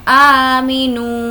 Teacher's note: नू को खींचेंगे क्योंकि वाव मद्दा। अलिफ मद्दा, या मद्दा, वाव मद्दा, ये हुर्फ़े मद्दा का क़ायदा है जिसमें हमें तीनों को खींचकर पढ़ना है।